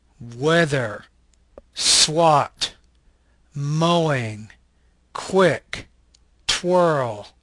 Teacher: this is a bilabial Glide voice consonant